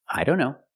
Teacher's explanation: here the t is between consonants so we don't pronounce it